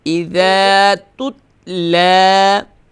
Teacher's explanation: Don't do qalqala on the ta.